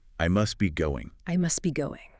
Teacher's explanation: The T in must is often deleted because it sits between the S of must and the B of be. The cluster STB is just simplified to SB. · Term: consonant cluster simplification